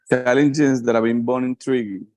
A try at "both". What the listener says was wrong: Okay, but you said bone. I think you said bone, hueso, both. Yeah, challenges that have been both intriguing.